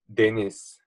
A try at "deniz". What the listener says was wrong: Yeah, but like again, a little bit slower on the vowels. Deniz. Deniz.